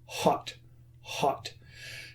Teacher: if I say the word hot, the H is aspirated. Okay, so the only sound that you hear is the sound of the air moving. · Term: aspiration